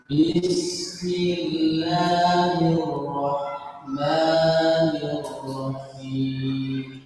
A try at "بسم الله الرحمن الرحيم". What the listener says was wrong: أسرعت في الراء. الراء نطقها لا بأس جيد، لكن لا تسرع فيها وفخمها. نطقها صحيح، لكن نسبة تفخيمها غير صحيح. فالراء لابد أن تفخم. اسمع: بسم الله الراء. أنت تقول بسم الله الرحمن الرحيم عادية. أنا أريد أن نفخم. بسم الله الراء.